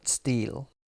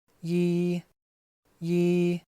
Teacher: here we put the Yi consonant before the E vowel